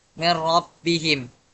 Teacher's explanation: cara bacanya dilebur tapi tanpa dengung · Nun sukun bertemu huruf la. Nun sukun tetap dibaca lebur namun tanpa dengung · Nun sukun bertemu ro dan tanpa dengung. Tetap melebur kan tetapi tidak ada dengungnya. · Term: idgam bila gunah, idgham bila gunnah